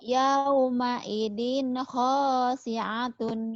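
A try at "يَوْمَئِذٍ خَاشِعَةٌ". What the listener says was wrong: Shin. Khosyi'atun. Yawma idzin khasyi'atun.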